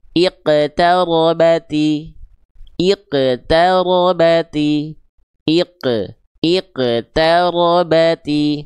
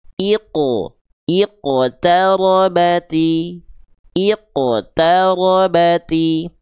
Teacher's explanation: Karena huruf qaf itu ketika dipantulkan tetap pangkal lidahnya naik. Pangkal lidahnya tetap naik. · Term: huruf qalqalah yang tebal